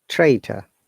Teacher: Look, first R is pronounced, the last R is not pronounced.